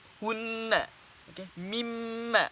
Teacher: Wajib dengung ketika mana nun sabdu dan mim bersabdu. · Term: wajibul gunnah